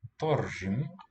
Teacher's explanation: R is going to color the A.